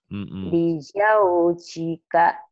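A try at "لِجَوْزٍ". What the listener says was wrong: Ya, zainya dilatih ya, zainya masih jim, masih keras. Ini rapuh.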